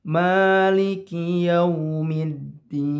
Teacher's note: di sini ada mad tabi'i, panjangnya 2 harkat. Tidak lebih ya, tidak terlalu panjang.